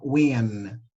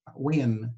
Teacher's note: Ó, já não tem agma. Ele termina com N de navio normal, né? Ele vai terminar com a letra N.